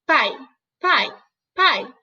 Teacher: Então, o A é a vogal e o I a semivogal.